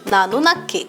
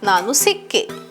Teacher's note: when the past tense marker ka is added, the last consonant ga is assimilated with ka to give double ka